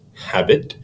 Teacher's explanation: a stressed syllable followed by an unstressed syllable such as habit an I am is an unstressed syllable followed